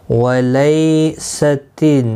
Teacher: یالین ہے، تھوڑا نرمی کے ساتھ کھینچ کر ادا کریں گے